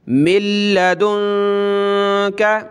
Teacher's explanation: نون ساکن کو ہم نے چھوڑ دینا ہے، میم کو ڈائریکٹ ہم نے لام کے ساتھ ملانا ہے. میم لام زیر مل، لام زبر لا، مل، دال نون پیش دون کریں گے اور نون پہ ہم نے ناک میں آواز پیدا کرنی ہے.